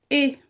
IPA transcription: e